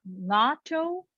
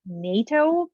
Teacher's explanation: no English word actually begins with the sound N, which is a velar nasal sound. Some of you might think that it looks very similar to NATO, like NATO, but that's a N, like an alveolar N, and not the velar N.